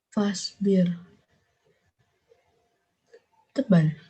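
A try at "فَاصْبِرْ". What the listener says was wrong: Tebal apa tipis? Salah. Tipis. Karena ro apapun itu di sini kemudian di sebelumnya harokat kasroh. Maka dia dibaca tipis. Fasbir. Fasbir. Di sini ada kasroh. ro didahului harokat kasroh, berarti dia dibaca tipis. kalau ro didahului apapun di situ ada hurufnya atau misalkan langsung didahului harokat fathah atau doma, berarti dia dibaca tebal.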